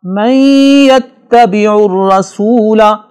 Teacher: من یتبع الرسول نون ساکن کے بعد حروف ینمو میں سے یا آ رہا ہے، لہٰذا نون ساکن کی آواز کو یا میں اس طرح مکس کر کے پڑھیں گے کہ غنہ ہو اور نون کی آواز ظاہر ہو، جسے ادغام مع الغنہ کہتے ہیں.